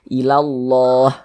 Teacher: Baris satu di atas huruf harakat fathah. Maka lafaz Allahnya dibaca tabkhim, dibaca tebal.